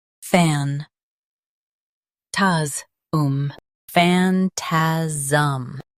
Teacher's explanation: Stress fan, keep taz light.